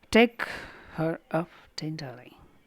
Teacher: this foot is a stressed syllable followed by 2 unstressed syllable, the reverse of anapast. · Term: Dactylic